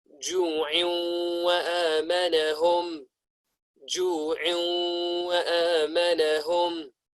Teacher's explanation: We're going to merge the tanween with the letter waw. Are we going to do this with ghunna or without ghunna? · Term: idgham